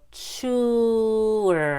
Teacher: you do have to put the W sound in between ooh and ER so that they'll link smoothly together